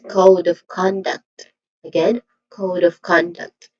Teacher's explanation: Again, duct, which also has a short sound. So the stressed syllable here is code and con.